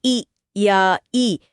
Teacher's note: जब अग्र स्वर जैसे ई या ई का उच्चारण होता है तो जीभ का आगे का हिस्सा सक्रिय होकर ऊपर की तरफ उठता है